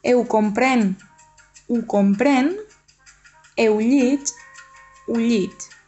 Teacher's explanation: es pronuncia eu o u davant de verb que comença per consonant